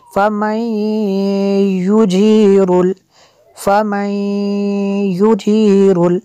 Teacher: نون ساکن کے بعد یا ہے حروف ارمالون میں سے تو یہاں پہ ادغام ہوگا